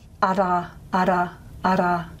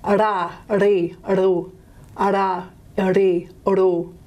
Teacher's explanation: So languages will occasionally contrast these kinds of sounds, an alveolar tap from a retroflex sort of flap.